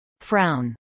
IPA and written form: fɹaʊn (frown)